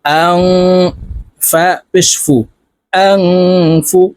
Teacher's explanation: নুন সাকিনের পরে ইকফার হরফা আসছে তাই এই নুনকে নাকের ভিতরে লুকাইয়া গুন্নার সহিত পড়বো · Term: ইকফা গুন্না